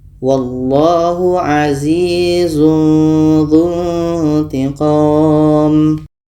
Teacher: ada tanwin bertemu dha. Dha ini huruf ikhfa ausat, maka kita juga samarkan.